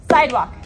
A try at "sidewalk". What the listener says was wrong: Sidewalk. Oh, no, you're breaking it apart. Let's practice.